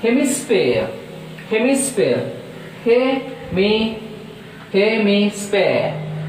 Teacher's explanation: so there are 3 syllables, so that stress is on first syllable